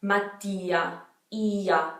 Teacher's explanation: It's like, it becomes almost like a Y sound in between the I and the A. That's how strong it is when you put two vowels beside each other.